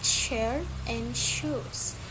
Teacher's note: It is a voiceless post-alveolar fricative.